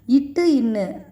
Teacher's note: நாவின் நுனி அன்னத்தின் நுனியை தொடும்.